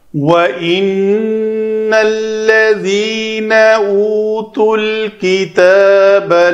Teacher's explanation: واو کے لیے دونوں ہونٹ گول، نون مشدد ہے، غنہ کریں گے